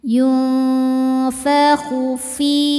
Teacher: Karena nun sukun bertemu huruf fa. Cara bacanya nun disamarkan ke fa kemudian dengungkan. Ya, samar dan dengungannya sama besar. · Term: ikhfa hakiki awsat